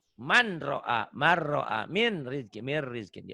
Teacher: Nun mati atau tanun ketemu ro. Idgom diidgomkan dimasukkan tanpa dengung. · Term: Idgom bila gunnah